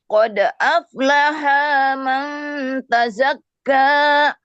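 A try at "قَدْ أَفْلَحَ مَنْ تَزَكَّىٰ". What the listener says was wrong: Awas, jangan baca aflahaman. Awas, jangan lahaman. Itu ada mat tuh.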